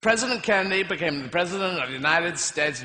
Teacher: notice how his voice moves back in his throat and down in his chest when he's imitating the American accent